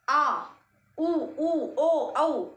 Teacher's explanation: पीछे से जीभ हिल रही है बिल्कुल हल्के से